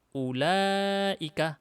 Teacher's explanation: Ulaika ini diucapkan ulaika, lamnya panjang, alifnya tidak ditulis di sini, makanya di sini diharokatin begini.